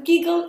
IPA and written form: ˈɡɪɡ(ə)l (GIGGLE)